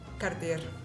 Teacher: If we don't know the correct pronunciation, we would say Cartier. In Italy, I think we say Cartier with a strong R in the end